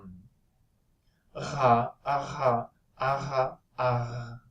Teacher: Okay, so you have the tongue retraction comes to the uvula here, and then it's the uvula itself that is trilling, right? So the air in passing makes the uvula trill, and it sounds like aha, aha, aha, aha.